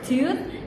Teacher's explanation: And then if you want to say like U, as in the word tooth, it's back vowel sounds because your tongue is positioned on the back of the mouth